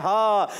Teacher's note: हा की अदायगी हलक के नीचे वाले हिस्से से अदा होता है